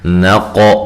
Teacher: نون کو باریک، قاف کو موٹا ادا کرنا ہے اور ہلا کر پڑھنا ہے، عین کو واضح نکالنا ہے۔